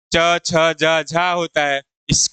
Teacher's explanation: च, छ, ज, झको हम तालव्य व्यंजन कहते हैं